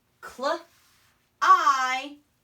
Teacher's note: Sometimes when B comes after M at the end of a word, that B is silent.